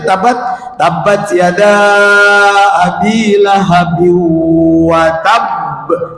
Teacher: Tekan dulu baru lepas qalqalahnya. Kenapa? Ada tasdid di huruf qalqalah di ujung ayat. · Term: qalqalah yang bertasdid